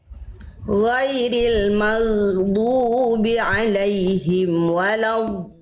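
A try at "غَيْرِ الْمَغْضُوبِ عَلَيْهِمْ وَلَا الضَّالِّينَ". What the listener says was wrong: Du-nya kepanjangan Bunda. Ghairil maghdu, jangan dubi kepanjangan. Kepanjangan sedikit. Ghairil maghdubi alaihim waladdallin.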